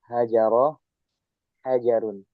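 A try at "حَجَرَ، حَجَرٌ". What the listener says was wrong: Haknya kurang keluar udaranya. Hajarun.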